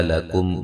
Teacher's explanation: لکم میم ساکن کا اظہار ہے